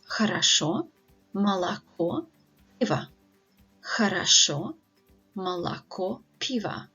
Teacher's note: So in the words хорошо и молоко, so both of these words have 3 syllables, and the stress is on the last syllable, on the last O, so that all the previous O's are pronounced as wide A's.